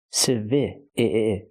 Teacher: The stress is on the second syllable. So we use the short i sound ci i like this is civilian.